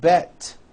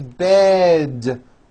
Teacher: Bed has a voiced D ending. It's not bet with an unvoiced T, it's bed with a voiced D.